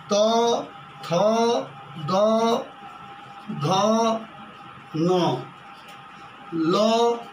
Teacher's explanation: ह्रस्व लिड़ी, दीर्घ लिड़ी, त, थ, द, ध, न, ल और दंत स दांत से बोले जाते हैं